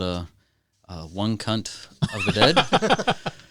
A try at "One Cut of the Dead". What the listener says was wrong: That was, you added an extra letter. One cut of the dead. We don't, y'all don't say that.